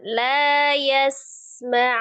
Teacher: Mimnya, ma-nya pendek. Tidak dinaikkan.